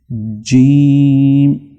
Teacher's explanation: जीम की आवाज जुबान के दरमियानी हिस्से को जब आप तालू से लगाएंगे तो उस वक्त जीम अच्छी तरह से अदा होगा।